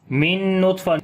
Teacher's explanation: ساکن کے بعد نون آگے ادغام غنے کے ساتھ کریں گے، طا کو موٹا پڑھیں گے اور قلقلہ بھی کریں گے، کمزور قلقلہ ہوگا